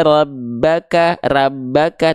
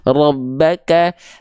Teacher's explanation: huruf ro ketika dia berharakat baris atas atau fathah huruf ro harus dibaca dengan keadaan yang tebal